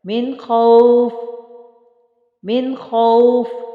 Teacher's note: خوا کو خوب موٹا پڑھیں گے چونکہ یہ موٹے حروف میں سے ہے